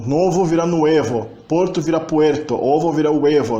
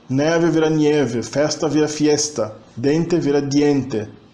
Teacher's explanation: passam pela ditongização de certas vogais, especialmente o O e o E, quando estão em palavras onde não há muitas sílabas, né?